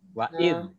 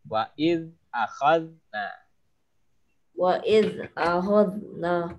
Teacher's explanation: Hati-hati huruf zal dia memang lembut ya, tapi nggak ada kol-kolah, bukan wa'id, wa'id, jangan.